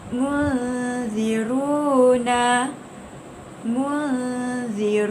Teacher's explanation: Cara bacaannya adalah wajib diikhfakan dengan kadar dengung 2 harakat. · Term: ikhfa hakiki